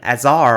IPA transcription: æzɑɚ